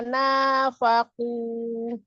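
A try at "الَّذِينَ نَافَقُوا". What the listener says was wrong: Faku, dua harokat.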